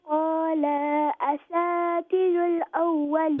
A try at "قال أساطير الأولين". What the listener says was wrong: Then qala, don't make the lam long, and asati, the ta is going to be long because it's got a ya madda. So it's qala asatirul awwalin.